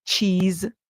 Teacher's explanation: In the word cheese, Z, you hear S at the end make a sound like Z.